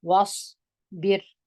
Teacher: صاد دروند دی په ډکه خولې وایست